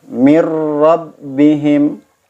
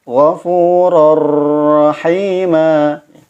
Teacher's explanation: Ketika tanwin bertemu dengan huruf ro-nya, langsung hanya sekedar memasukkan tanwin kepada huruf ro seperti ditasydid. Padahal lafaz aslinya ini tidak ada tasydidnya. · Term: tanpa guna